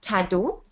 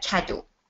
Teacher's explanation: s'il substitue le son « t » pour le son « que », un enfant peut dire, par exemple, « tado » au lieu de « cadeau ».